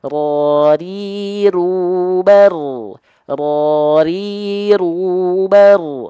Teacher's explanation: cukup sedikit saja mungkin hanya satu sampai dua getaran saja tapi getarannya tetap tegas lugas dan jelas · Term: huruf ra